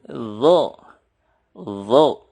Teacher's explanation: Zo dikeluarkan lidahnya atau ujung lidah menyentuh gigi seri atas dan digemakkan di dalam mulut.